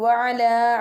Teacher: ain pronounced from the middle part of throat